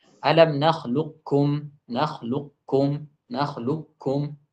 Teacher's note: mengucapkan kaf yang mati kemudian ditebalkan tanpa ada qalqalah. Kemudian setelahnya ada kaf yang bertasydid yang tipis.